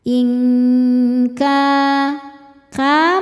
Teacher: Karena nun sukun bertemu huruf kaf. Cara bacanya nun disamarkan ke kaf disertai dengungan. Nah, ini dengungnya besar karena makhraj atau tempat keluar huruf kaf ini jauh dari nun.